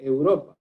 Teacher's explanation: esta palabra tiene la sílaba tónica, es decir, la acentuación en la sílaba ro.